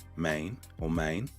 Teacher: The first component is vowel stretching. In Memphis, the vowels get drawn out.